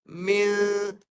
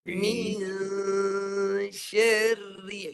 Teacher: Jadikan dia dua bunyi. Satu baris bawah mim, satu dengung. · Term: mim baris bawah